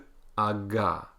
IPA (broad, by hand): g